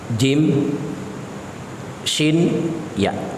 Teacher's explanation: ini kan dia pertemuan antara tengah lidah dengan Tengah langit-langit mulut bagian atas